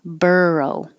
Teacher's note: Burr is the stressed syllable.